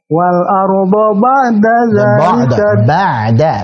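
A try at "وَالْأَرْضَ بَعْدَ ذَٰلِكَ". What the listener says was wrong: ba'da tipis.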